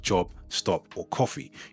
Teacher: You'll really hear that open vowel sound in the middle. So instead of an O, it sounds more like an AH.